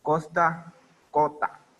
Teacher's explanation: La aspiración de la S final de sílaba en posición anteconsonántica